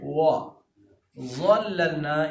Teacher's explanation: واو کو پڑھتے ہوئے آپ ہونٹوں کو گول کر کے پڑھتے ہیں. وا ظللنا، یہ ظا ہے، ظا موٹا تو ہوگا لیکن بھاری نہیں ہوگا ضاد کی طرح.